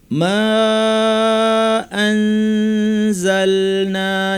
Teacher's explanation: কারণ পরের শব্দের শুরুতে হামজা এসেছে, এর নাম মাদ মুনফাসিল, 2 আলিফ টানবো।